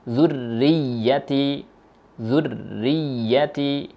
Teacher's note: Sempurnakan tasydid di huruf ro dan sempurnakan tasydid di huruf ya. Jangan sampai hak salah satunya tidak terpenuhi.